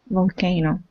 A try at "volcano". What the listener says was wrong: Nice.